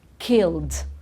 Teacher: it's a duh it's not a t and it's not a id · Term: the d sound